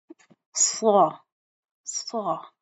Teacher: پچھلے زبان کے پچھلے حصے کو ہم نے بلند کرنا ہوتا ہے تالو کی طرف، ٹھیک ہے، اور اس کو ہم موٹی سیٹی کی آواز سے ادا کرتے ہیں